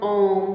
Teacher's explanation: इनके उच्चारण में 2 से अधिक मात्राओं का समय लगता है, जो प्लुत स्वर होते हैं। जब हम ओम बोलते हैं तो समय लगता है, उसमें 2 मात्राओं से अधिक का समय लगता है